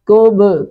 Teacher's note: کب کاف پیش با، کب با ساکن پہ قلقلہ ہوگا